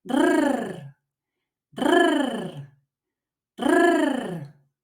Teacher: you need to position your tongue behind the top front teeth. Then you roll the sound imitating the sound of a car engine.